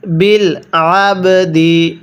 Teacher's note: আইনটাকে গলার মধ্যে চাপ দিয়ে পড়লে আইনটা সহি শুদ্ধ উচ্চারণ হবে, অন্যথায় আমরা অনেকে আইনটাকে হামজা পড়ে ফেলি।